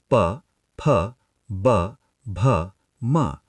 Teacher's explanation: आपके दोनों होठ मिल रहे हैं। यह ओष्ठ है यानी लेबियल है।